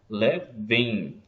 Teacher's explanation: O som de I no final é um ditongo decrescente, nesse caso aí, nasal. Então, conta-se como um ditongo aí também, nesse encontro aí, por causa da pronúncia.